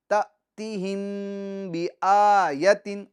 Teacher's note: میم ساکن کے بعد حرف با آ جائے تو میم ساکن میں گننا کر کے پڑھیں گے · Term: اخفائے شفوی